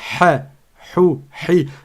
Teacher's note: Le ha, il sort du milieu de la gorge.